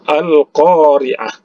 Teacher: huruf qaf yaitu ada mad asli ini ya panjangnya 2 harokat kemudian roll berbaris bawah ini tarqiq jadi ditipiskan saja Kemudian di